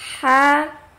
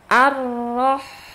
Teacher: Yang satu keluar dari tenggorokan tengah, yang kedua dari bawah.